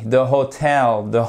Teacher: j'ai mon accent tonique sur la seconde syllabe. C'est pas the hotel, mais the hotel.